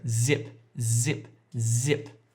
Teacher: if you put your hand on your throat you can feel it vibrating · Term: voiced